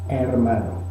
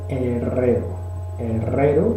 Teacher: La E de hermano podría ser un sonido similar, es una E abierta, es una E que se encuentra ante una R. En ese contexto la E en castellano pues eso lo hace un poco más amplia, hermano.